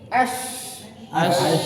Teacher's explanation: bunyinya di tengah lidah bertemu dengan langit-langit atas